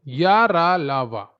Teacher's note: इनकी संख्या होती है चार। इनका उच्चारण स्वर और व्यंजन के बीच का होता है इसलिए इन्हें अंतस्थ व्यंजन कहते हैं।